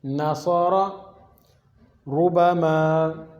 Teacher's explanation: اب یہاں پہ را پیش ہے، را کے اوپر پیش ہے تو آپ پڑھیں گے ربما، موٹا کر کے پڑھیں گے